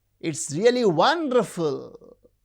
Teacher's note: the rise fall it is used in very restricted context and something is highly enthusiastic or even sarcastic